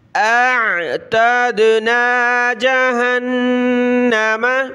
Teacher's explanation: حمزہ کی آواز پھر عین کی اور دال پر ہم نے قلقلہ کرنا ہے